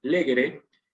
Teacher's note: cuando tengo legere, es porque esa E es breve. ¿Sí? Entonces me queda esdrújula la palabra. Esta, yo le puse la indicación de macrón a tenere para que se note bien patente que es una palabra grave y que no es esdrújula, que no es breve esa letra, esa vocal.